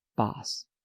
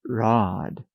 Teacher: boss is short Rod is long